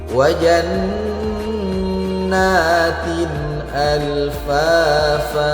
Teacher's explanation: tanwin berjumpa dengan huruf alif maka harus dibaca jelas. Hukumnya disebut izhar.